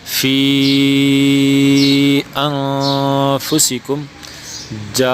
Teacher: 2 اڑائی الف یعنی 4 یا 5 حرکات کی مقدار تک کھینچ کر پڑھیں گے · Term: مد منفصل